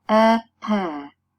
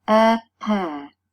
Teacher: the two lips are the primary articulators. In this case, the two lips are active articulators and they come into contact. So, in the articulation of this consonant sound, we can easily perceive the contact between our lips.